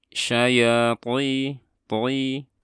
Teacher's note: Ini juga mad tabi'i, dan ini huruf to, dan dia karena dia bersifat idbaq, maka meskipun berharokat kasroh, suara tafkhimnya harus terdengar jelas